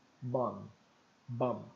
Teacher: o som do M ele fecha os lábios não dá tempo abrir para pronunciar o b então fica mudo